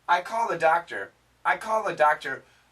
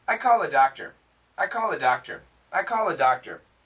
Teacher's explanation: When we say this quickly, here, the L actually cancels the TH, and basically we hear calla